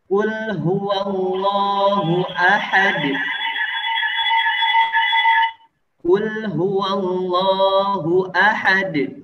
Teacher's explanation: Maka kita pantulkan bunyi suara dalnya ketika dalam keadaan sukun.